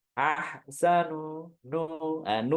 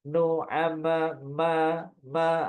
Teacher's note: ada ada dengungnya nu ma ma ada dengungnya ahsanu Amala waanu mim sama nunnya pasti pasti dengung Walaupun dia berharakat biasa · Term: gunah ankos